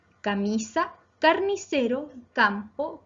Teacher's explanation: camisa, carnicero, campo, se acentúan en la penúltima sílaba, por lo tanto son palabras graves.